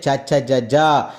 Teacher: తాలువు భాగములో పుట్టే అక్షరాలు తాలువు అంటే దవడ దవడ భాగంలో పుట్టే అక్షరాలు ఇ చనే య ష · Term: తాలవ్యాలు